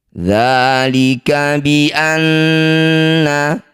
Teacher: Dzalika bi anna, nun bertasydid, disebut bacaan gunnah musyaddadah. Cara bacanya bunyi nun kita dengungkan 2 harokat.